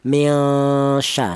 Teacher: Ifad artinya ausat itu pertengahan ya. Dipandang dari segi bunyinya dia tidak terlalu samar juga tidak terlalu dengung. Cara bacanya mya tidak dengung. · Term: ifa ausat